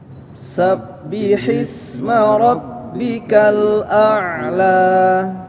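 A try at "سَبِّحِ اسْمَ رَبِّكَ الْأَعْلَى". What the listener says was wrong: Ya, perhatikan untuk ayat pertama ketika kita mengucapkan subbihis, ya. Kadang kita haknya kurang. Hi ya. Jadi cara bacanya disempurnakan hi sabbihis gitu.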